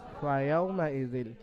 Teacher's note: ফায়ের উপরে জাবার হারাকাত তাড়াতাড়ি পড়তে হবে, টান্না নিষেধ।